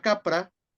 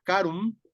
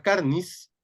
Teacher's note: es una oclusiva velar sorda de entrada porque es la que está más presente en todos estos grupos de cognados